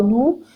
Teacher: نون پیش واو نو، اس کو بھی دو حرکت لمبا کرنا ہے